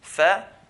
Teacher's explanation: And also we looked at the Al-Shafataan, the two lips, the two makhraj points, one for fa, the other one for waw, mim and ba. Fa, tip of the incisors, front two teeth, touching the inside of the lower lip. F, equivalent to the F letter.